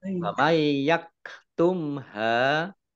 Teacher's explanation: nun sukun bertemu dengan huruf ya, bacaan idgham bi gunnah, masuk dengan mendengung yaitu mendengung ya.